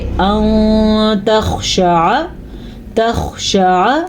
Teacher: آمنو ان تخشع، نون ساکن کے بعد تا حروف اخفا میں سے آیا ہوا ہے تو نون ساکن کی آواز کو ہم چھپا کے اور غننے کے ساتھ پڑھیں گے